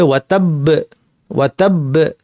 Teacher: তাহলে পাশাপাশি 2টা বা সাকিন, পাশাপাশি 2টা বা সাকিন যেহেতু আছে, প্রথমটা কলকলা হবে না, পরেরটা কলকলা হবে